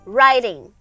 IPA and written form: raɪtɪŋ (writing)